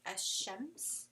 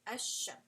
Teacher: It is al-mutaqaariban rule, and basically it is going to be the rule of idgham kamil applied to it, right? So you basically drop the sound of the lam and you are just going to pronounce the next letter after it.